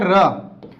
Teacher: तो इसको लुंठित व्यंजन क्यों कहा जाता है, तो इसे लुंठित व्यंजन इसलिए कहते हैं क्योंकि जब इस र का उच्चारण करते हैं तो हमारी जीभ लुढ़कती हुई प्रतीत होती है, तो इसे हम लुंठित व्यंजन कहते हैं।